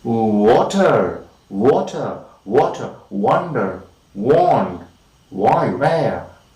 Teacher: the height of the tongue is of course exactly that of the height required for the articulation of ooh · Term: semivowel